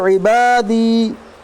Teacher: दाल के ऊपर जज़म है, दाल हुरूफ़ कलकला के 5 हरफ, इसलिए दाल पर कलकला होगा। या साकिन से पहले ज़ेर, इसलिए या मद्दा होगा, या मद्दा को 1 अलिफ के बराबर खींच कर पढ़िए